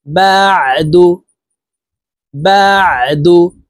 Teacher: আইন হরফকে হালুকের মধ্যখান থেকে চাপ দিয়ে উচ্চারণ করব